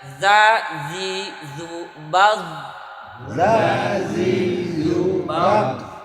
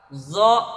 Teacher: Ada di situ ada za sama zo kadang-kadang tertukar ketika mati. Za itu sifatnya istifal. Di bawah tipis. Zo mempunyai sifat isti'la, tebal.